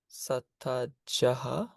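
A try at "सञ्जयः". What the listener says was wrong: Okay, this is not a the, this is the nasal that goes with the j. Sanjayaha. Sanjayaha. Sanjayaha. Sanjayaha.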